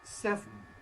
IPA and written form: ˈsevn̩ (seven)